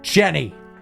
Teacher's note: there was no Rising intonation at the end of my name as though asking a question